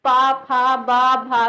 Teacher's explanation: हमारे होंठ जो है वो मिल रहे हैं आपस में, कभी मिल रहे हैं कभी खुल रहे हैं। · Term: ओष्ठ